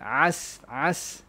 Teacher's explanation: Makhraj dia dekat wasatul halq. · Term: ain